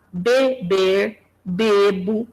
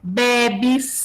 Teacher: um e é pronunciado como fechado beber bebo mas em algumas palavras em algumas flexões ele é aberto bebe né ele já é aberto Ele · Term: alternância vocálica